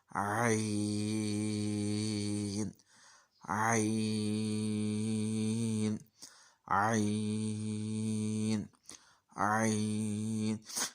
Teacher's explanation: जब मैं आइन स्टार्ट करता हूँ तो पहले आइन की गले के ऊपर हल्की सी आवाज़ आती है, आ ऐसे। तो ये इस आवाज़ से मैं इसको अदा कर दूँ, आइन, आइन, आइन, आइन। · आइन हरूफ हल्की है, गले के दरमियान से अदा करते हैं इसको